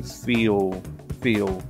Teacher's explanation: There's some lip rounding that can occur. And some people hear it almost as a W, rather than an L as well. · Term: Dark L Vocalization